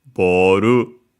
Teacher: So boru low high high and would stay high if we added a particle after it. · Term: unacented